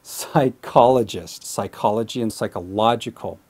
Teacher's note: Just remember to put the stress on the first O